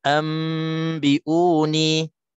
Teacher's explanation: nun mati ataupun tanwin bertemu huruf iqlab yang satu, iaitulah huruf ba, maka hukumnya iqlab, cara bacaannya dengung dua harakat, dan contohnya iaitulah ambiuni, nun mati bertemu dengan ba.